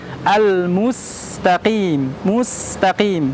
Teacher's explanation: huruf mim di sana berharokat dhammah. Harokat dhammah, maka kita harus membulatkan bibir kita maju ke depan, atau mudahnya diistilahkan dengan monyong ke depan ya.